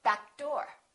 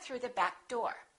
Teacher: Don't release that k. Just go back door.